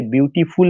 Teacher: ब्यूटीफुल में 3 syllable है, क्योंकि जब आप उच्चारण करते हैं तो आपकी आवाज़ ब्यू, फिर टी, फिर फुल पर रुक रही है।